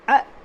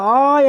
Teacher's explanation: அ என்னும்போது ஒரு மாத்திரையும், அல்லது க என்னும்போது ஒரு மாத்திரையும், அதுவே ஆ என்பது 2 மாத்திரையும், கா என்பது 2 மாத்திரையும்